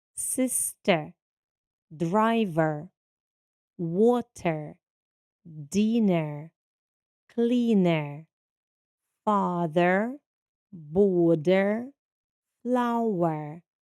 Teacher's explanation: Звук е. Буквосполучення і R дає звук е, коли воно стоїть в кінці слова та в безударному положенні.